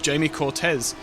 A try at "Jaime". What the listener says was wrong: Yeah, so this is another Spaniard that we're taking aboard, Jaime. It's not Jamie. Jaime, yeah. Like Jaime Alguersuari.